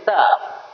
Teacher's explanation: जिह्वा सीधा दांत में जाके टकरा जाती है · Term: दंत सा